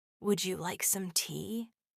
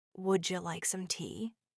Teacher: The sound of would you becomes woulda.